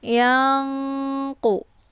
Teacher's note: Nun posisinya di ujung lidah sementara qaf posisinya di pangkal lidah. Jadi cara bacanya yaitu nunnya disamarkan kemudian siap-siap masuk ke huruf qaf. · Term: ikhfa ab'ad